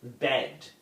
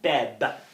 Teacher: that final d sound, which should be more of an alveolar sound, is assimilated to the labial position of the initial b sound. So the word bed, B-E-D, would be produced more like beb, B-E-B.